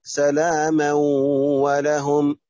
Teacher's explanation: تنوين متباعد غير متساوي وبعد حرف الواو إضغام بغنة